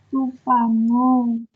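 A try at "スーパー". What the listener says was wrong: Supa, panjang dua-duanya ya, supa.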